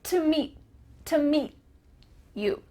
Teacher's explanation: your tongue is going to be at the top of your mouth ready to make the T sound, but no air comes out. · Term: final T sound